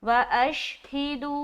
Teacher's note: ऐसी आवाज तो यहां पर हम पढ़ेंगे व अश व अश ह ज़ेर ही दाल व मद पेश दू व अशद मद आ गया तो एक अलिफ से जायद खींचेंगे पांच अलिफ के दरमियान तक का खींचना है और यह है मदे मुफसिल क्योंकि हरफ मदद के बाद हमजा दूसरे लफज़ के साथ आ रहा है। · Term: मद्दे मुनफसिल